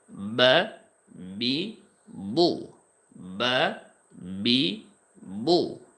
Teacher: দুইটা ঠোঁট হালকা একটু প্রেসার দিলে বা উচ্চারণটা হয়ে যাবে।